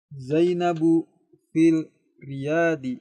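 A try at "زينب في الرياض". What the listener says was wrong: Ini huruf ra, huruf samsiyah. Lamnya enggak terbaca, melebur. Zainabu fir Riyadi.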